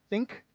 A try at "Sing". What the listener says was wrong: No, Sing. Sing. No, Sing with an S.